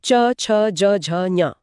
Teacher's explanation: जीभ ऊपर तालु को छूती है। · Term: च वर्ग